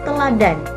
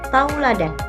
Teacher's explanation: Ia berubah menjadi kata tauladan. Vokal tunggal e berubah menjadi dua vokal, yaitu au. · Vokal tunggal E berubah menjadi dua vokal, yaitu au, sehingga kata teladan sendiri berubah menjadi kata tauladan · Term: diftong, Diftongisasi